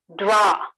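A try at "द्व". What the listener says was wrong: Atrapi, it should be dhakara.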